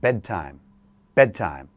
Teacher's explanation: we can drop the D sound